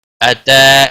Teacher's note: تا کے اوپر کھڑی زبر ہے، ایک الف کے برابر کھینچ کر پڑھیں گے